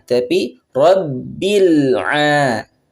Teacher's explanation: Di sini huruf ba ada tasydid, maka kita harus tahan.